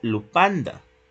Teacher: esa F la sustituyó por una P, una oclusiva bilavial. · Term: oclusiva bilabial